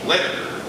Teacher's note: So writer, in fact, has this pattern of stressed vowel tap syllabic R